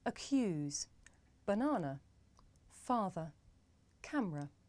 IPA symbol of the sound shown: ə